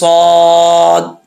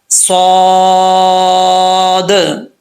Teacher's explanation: تو لاسٹ پہ دال میں قلقلہ لازمی آنا چاہیے۔ جو لوگ پڑھتے ہیں صاد، یہ غلط ہے، صاد، ٹھیک ہے۔